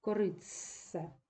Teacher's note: Т знову втрачає свою особливість і уподібнюється ц